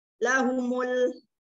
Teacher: lahumul ada alif lam qomariyah dibaca jelas